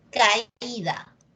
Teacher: al momento de pronunciar tu notas que la que suena más es la vocal cerrada